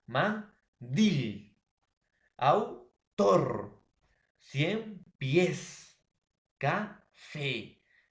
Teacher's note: Palabras que tienen la mayor fuerza de voz en la última sílaba. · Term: palabras agudas